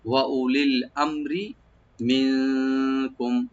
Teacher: ওয়া আমে, ওয়া উলিল আমে, এরকম না, ওয়া উলিল আম বন্ধ করে রাখবেন। আর রাটাকে একদম পাতলা করে পড়বেন, লাইট করে।